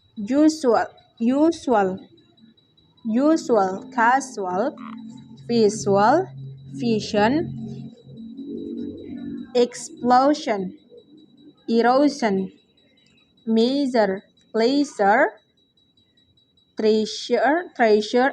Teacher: voice palato alveolar fricative sound ZH